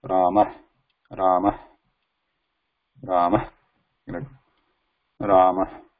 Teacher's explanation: The air is just coming from the kantha. There is no nasal or nose or anything involved here. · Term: Visarga